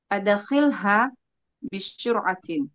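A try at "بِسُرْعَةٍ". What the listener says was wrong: Bisuratin pakai sin. Bisuratin.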